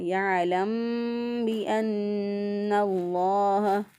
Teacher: کیونکہ یہاں پہ میم ساکن پہ گنہ ہے